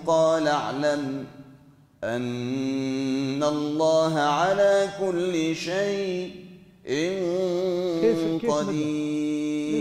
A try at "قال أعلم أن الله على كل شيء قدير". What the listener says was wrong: كيف قلت شيء مديتها هيك؟ إيه مديتها شوي.